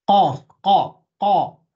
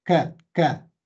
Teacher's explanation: The qa is at the very back of your tongue. It's not the same like a kaf, ka, ka, like the English sound ka. Qa, qa, as back as you can go on your tongue.